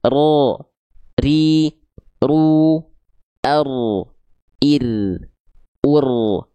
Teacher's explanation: Dia punya getaran, tapi karakter getarannya bukan dengan karakter getaran yang berlebihan. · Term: takrir